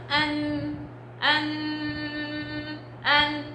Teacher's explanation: الغنة لها المخرج خاص اللي هو الخيشوم. الغنة بتيجي من هنا، مخرج خاص.